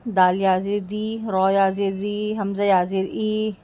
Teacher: ان کو ایک الف کے برابر یعنی 2 کاؤنٹس تک کھینچ کر پڑھتے ہیں، 2 سیکنڈز تک کھینچ کر پڑھتے ہیں۔ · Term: حروف مدہ